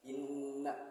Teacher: di inna ini ada gunnah, yaitu gunnah asli yang dimana setiap bertemu gunnah ini harus dibaca inna, jadi mendengung